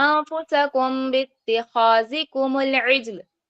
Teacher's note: मीम साकिन के बाद अगर हर्फ बा आ जाए तो वहां पर इख्फा होगा, कमजोर गुन्ना होगा।